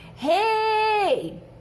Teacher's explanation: Eu tenho um ditongo, só que eu tenho vogal mais semivogal. O I é o mais fraco. Então, aqui eu tenho um ditongo decrescente.